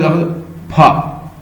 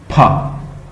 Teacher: मेरे मुंह से एकदम हवा बाहर निकल रही, फा। तो दिस इज अ प्लॉसिव्स aspirated.